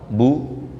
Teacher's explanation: Nah kalau kita lihat definisinya Pak Ibu, harokat itu adalah menjauhnya posisi mulut atau tenggorokan, menjauhi makhrajnya huruf tersebut menuju ke monyong. Kalau ba makhrajnya 2 bibir rapat, dijauhkan menuju monyong